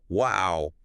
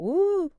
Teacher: A short clipped wow >> is just small polite surprise. >> But a long drawn out woo, that's huge admiration. The stretch carries the meaning.